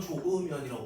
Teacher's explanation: 히읗 탈락 우리가 발음은 조으면이라고 발음을 해요